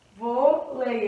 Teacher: E aqui a gente tem uma paroxítona que é vôlei, né? A sílaba tônica é um vô. E é uma paroxítona terminada em ditongo, por isso que eu acentuo o vô, do vôlei.